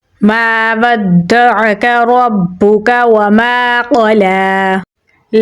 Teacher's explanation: عین کو گلے کے درمیان والے حصے سے نکالیں گے، کاف کو باریک پڑھیں گے، را کو پر یعنی موٹا پڑھیں گے اور با کے ساتھ ملائیں گے کیونکہ با کے اوپر تشدید ہے۔